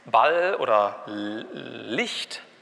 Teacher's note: Und ist sogar relativ weit offen. Das heißt, es ist so ähnlich wie ein Frikativ, aber die Öffnung ist weiter. Deswegen kommt es nicht zu diesen Turbulenzen, es rauscht nicht. · die Zunge geht in der Mitte oben an den Zahndamm, aber links und rechts ist offen. Und ist sogar relativ weit offen. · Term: Approximanten